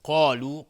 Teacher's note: قاف از حروف استعلاس غلیظ تلفظ میشه، الف هم تابع قاف غلیظ